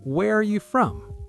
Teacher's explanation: We blend where and are together. And the from gets stressed at the end.